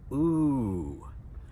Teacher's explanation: It's like when we smell something, something bad. "Oo" And notice it's long, and it goes up and then back down.